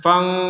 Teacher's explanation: Kalau dibaca dengung, 100% dengung, fang, rongga hidung berdengung 100% itu.